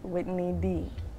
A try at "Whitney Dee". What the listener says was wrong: Whitney, even the knee, you elongated that one too. You see, Whitney. Knee D.